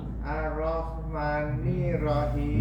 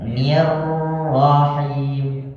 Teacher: Ni-nya gabung dengan R